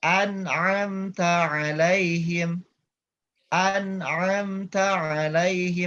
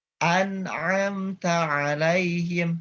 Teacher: Jadi langsung ke huruf ta agar tidak mantul ya Bapak Ibu ya. Jangan dilepas dulu bunyi mim sukunnya sebelum masuk ke huruf ta agar tidak mantul.